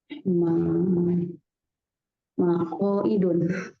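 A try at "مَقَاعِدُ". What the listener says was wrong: Maqo'idu ya, tanpa tanwin. Maqo'idu.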